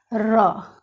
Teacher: र का उच्चारण करते समय बार बार जीभ तलवे से सट करके और कांपती है, तब इसका जाकर के उच्चारण होता है। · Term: प्रकंपी व्यंजन